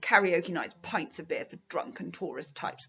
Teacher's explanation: we do actually have a lot of plosive sounds. The k, p, b, d, and then the t, t. So it's all quite forceful sounds.